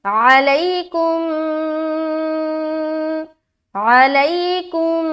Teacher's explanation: ادغام شفوی کا قاعدہ. تو میم کو میم سے ملا کر غنہ کر کے پڑھیں گے، غنہ کے ساتھ پڑھنا ہے.